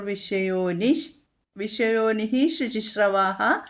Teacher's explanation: ശ ഇരട്ടിച്ചു അല്ലെങ്കിൽ ശയുടെ പകുതി വിസർഗ്ഗ സ്ഥാനത്ത് ചൊല്ലാം